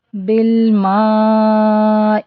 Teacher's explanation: آواز ہوتی ہے، اللہم اغسل، سل، ٹھیک ہے، مغسل خطایا بالماء، میم کے اوپر مد ہے، اس کو 4 کاؤنٹ اسٹریچ کریں گے